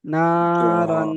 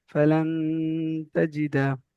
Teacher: তানমিনকে এক আলিফ পরিমাণ গুনা করে পড়তে হবে